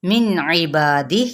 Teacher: नून की आवाज़ को जाहिर करेंगे यानी नून को, तो इबादिह यहाँ पे हम वक्फ करेंगे, ठीक है।